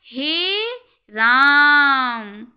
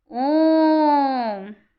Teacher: ह्रस्व स्वर के मुकाबले ये तिगुना समय ले रहा है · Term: प्लुत स्वर